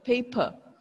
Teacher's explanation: this one which means the r sound is vanished is erased we don't have r sound in british accent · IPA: ˈpeɪpə